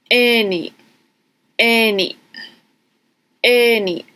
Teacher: it's like kind of like a pause or stop before you're actually saying the vowel. So it might be a little bit difficult to hear, but instead of any, it would be any, any, any. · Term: glottal stop